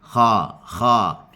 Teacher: Jangan kha tapi kha kha. Pangkal lidah naik, hujung lidah jatuh dan kita nak suara mengalir. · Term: huruf kha